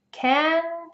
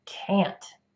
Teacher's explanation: we will stretch out the vowel sound even longer in the word can't and we'll make sure you can hear that t sound